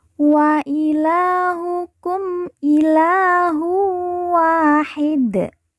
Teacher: masuk huruf wwau kemudian ditekan ditahan dua harakat dan didengungkan kemudian wa kita baca panjang dua harakat karena di depannya terdapat Alif